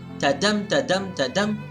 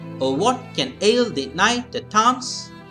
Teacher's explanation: the odd syllables are not stressed and the even syllables are stressed. So that is iambic meter.